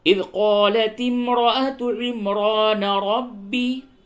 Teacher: عمران را کو پر کیجئے اور ربی میں بھی را کو پر کیجئے